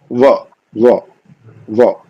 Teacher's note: हमारा नीचे का होठ ऊपर के दांत को छूता